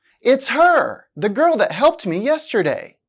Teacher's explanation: although her is a pronoun it's still stressed because the speaker wants to emphasize her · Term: stress a function word, emphasis